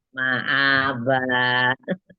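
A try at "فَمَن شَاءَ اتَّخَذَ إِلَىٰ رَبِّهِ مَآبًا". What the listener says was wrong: Ya, zaknya itu masih panjang tadi Ayang ya. Famang sya'at takhadha ila rabbihi ma'aba. Berlatih lagi yang dilihat panjang pendeknya.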